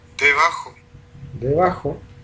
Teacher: Y aquí tenemos una bilabial aproximante o fricativa, sonora. De hecho, si uno la escucha, si uno la ve en el espectrograma, uno diría, tiene formantes, baja la intensidad, es aproximante.